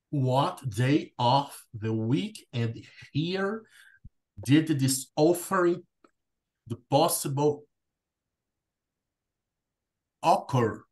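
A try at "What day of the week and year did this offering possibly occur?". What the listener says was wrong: Okay, very good.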